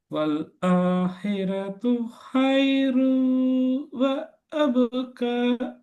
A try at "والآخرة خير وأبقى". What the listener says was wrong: وأبقى. நீட்டணும். وأبقى.